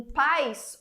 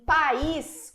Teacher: em PIS o nosso i é semivogal em país o nosso I ele é vogal ele é forte então Existe diferença tá então quando ocorre quando ocorre esse encontro